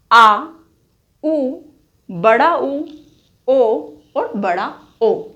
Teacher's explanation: जिन स्वरों के उच्चारण में जिह्वा का पश्च भाग या पिछला भाग प्रयोग किया जाता है उससे उन्हें पश्च स्वर कहा जाता है।